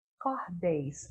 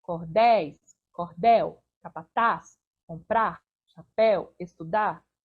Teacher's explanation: a última sílaba é tônica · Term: sílaba tônica